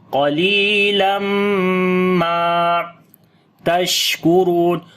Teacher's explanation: And the next qalilam, qaf we read in heavy sound, lam we long due to ya madda. After the tanween, the next letter is mim. We make idgham with gunna, and we long 1 alif here.